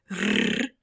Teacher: And trilling actually means that one vocal organ is rapidly vibrating against another organ, like for instance when we say rrr, the Spanish R, our tongue tips are vibrating against our teeth or just slightly behind the teeth